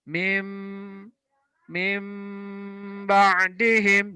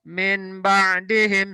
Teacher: Iklab adalah nun sukun atau tanwin bertemu huruf ba, maka bunyi nun sukun atau tanwin diganti dengan bunyi huruf mim, ya. Maka bunyi nun sukun atau tanwin diganti bunyi mim sukun disertai dengung